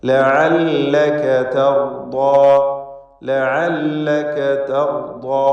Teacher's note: തർദാ റായിനും ദ്വാദിനും ദ്വാദിൻ്റെ ദീർഘാക്ഷരമായ അലിഫിനും എല്ലാം തഫ്ഖീമാണ്. തടിപ്പിച്ച് ഉച്ചരിക്കണം എന്നത് ശ്രദ്ധിക്കുക.